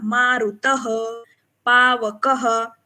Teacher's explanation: हाँ, अभी देखिए यहाँ पे जो विसर्ग है आगे, पावकः, मारुतः, इसका उच्चारण हमें कैसे करना है, मैंने वो भी आपको बताया था कि हमें यहाँ पे अ की मात्रा सुनाई दे रही, मारुत अ आ रहा है, तो विसर्ग का उच्चारण भी ह जैसे होगा